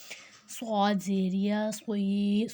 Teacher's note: صاد میں سیٹی بھی آئے گی اور ساتھ موٹا بھی ہوگا